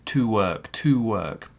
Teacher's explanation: it's not a weak to. It's a regular to, because we have work